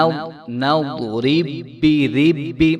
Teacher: را کے نیچے چونکہ کسرہ ہے تو یہاں پہ را باریک ہوگی